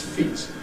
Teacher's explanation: We have a reduction in duration before a fortis consonant, before the /t/ sound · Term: Pre-fortis Clipping